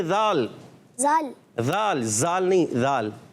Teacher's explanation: زبان کا سرا اور اوپر کے دانتوں کے اندرونی کنارے سے. زبان کا سرا اوپر کے دانتوں کے نون کنارے.